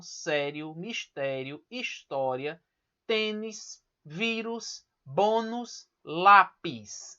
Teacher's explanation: a penúltima sílaba é a mais forte da palavra